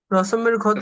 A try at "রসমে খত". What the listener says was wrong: রসমে খত, ক্ষত না, ক্ষত হলে কি হইতে হইব, ক্ষত বিক্ষত, ঠিক আছে কিনা?